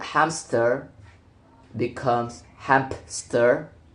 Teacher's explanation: A consonant p is inserted between m and s, a common epenthetic process in English. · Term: epenthesis